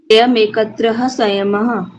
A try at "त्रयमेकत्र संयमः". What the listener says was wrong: एकत्र के पीछे विसर्ग नहीं है, त्रयम एकत्र बोलेगा, कत्र है नहीं बोलेगा, ठीक है। त्रयम एकत्र संयमः।